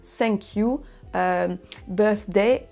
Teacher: beaucoup de Français vont dire thank you birthday en remplaçant le son th par un son s parce c'est le son qui ressemble plus dans la sonorité française